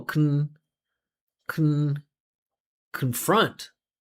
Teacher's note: because that confront should be a salabic consonant. It's an unstressed syllable that finishes with n.